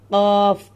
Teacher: लहात यानी कव्वे के मुत्तसिल जुबान की जड़ जब ऊपर के तालु से टक्कर खाए इससे क़ाफ अदा होता है।